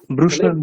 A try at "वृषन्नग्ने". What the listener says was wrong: বৃষণ বলবো না, আমরা বলবো ব্রুষণ।